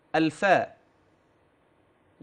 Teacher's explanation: اما الفاء انها من اطراف الثنايا المشرفه مع باطن الشفا السفلى